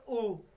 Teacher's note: तो वृत्तमुखी स्वर कौन से होते हैं, यानी कि जिनको बोलने में हमारे होठ वृत्ताकार खुलते हैं, एक वृत्त के आकार की तरह खुलते हैं